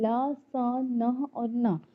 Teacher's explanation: जीभ के जो सामने वाले भाग है या जीभ की नोक जब दांत और मसूड़ों के आसपास जो उभरा हुआ जगह है वहां को छूती है तो वो कहलाता है वत्स्य